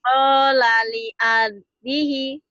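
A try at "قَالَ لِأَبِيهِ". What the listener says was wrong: Panjang. Linya panjang. Qala li abihi gitu.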